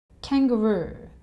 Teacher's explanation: This has three syllables. Kang, ga with the schwa sound, and roo. And the oo sound is the same oo in food. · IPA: /ˌkæŋ.ɡəˈruː/